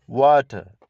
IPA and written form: ˈwɔːtə (water)